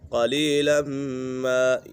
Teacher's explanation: میم مشدد ہے، میم مشدد میں ہمیشہ غنہ ہوتا ہے